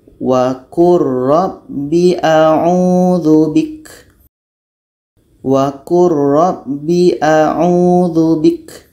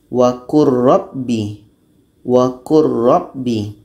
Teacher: bunyi lam masuk kepada ro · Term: Idam Kamil